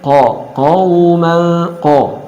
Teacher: Ada wawu sukun sebelumnya harakat fathah. Qafnya tetap dibaca tebal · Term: bacaan lin